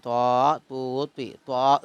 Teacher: നാവിന്റെ തല മേലെ മുൻപല്ലിന്റെ മുരടിൽ വെച്ച് പറയണം എന്നിട്ട് കാറ്റില്ലാതെ വായ് നിറച്ച് നല്ലൊരു ത്വാഹ് പറഞ്ഞോളൂ നാവിൻ തലമേൽ മുൻപല്ലിന്റെ മുരടിൽ വെച്ച് പറഞ്ഞോളൂ കാറ്റില്ലാതെ വായ നിറച്ച് നല്ലൊരു ത്വാഹ്